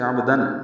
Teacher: عین وسط حلق سے ادا ہوگا، با ساکن میں قلقلہ ہے، تنوین کے بعد حمزہ آنے کی وجہ سے عبدن، دن میں اظہار ہے